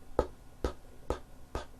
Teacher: No, your vocal cords are not producing a sound.